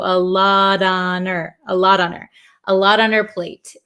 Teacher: d she must have a lot on a lot on her the H in her kind of disappears also